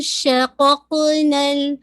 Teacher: قاف پہ باؤنس ہو رہا ہے, قلقلہ ہوگا. ٹھیک ہے, قاف کا مخرج آپ سب جانتے ہیں کہ بالکل آپ کی جو بالکل روٹ آف دا ٹنگ ہے سافٹ پیلٹ سے لگے گی.